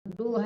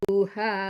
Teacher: yang 'ha' itu panjang, panjangkan 'ru'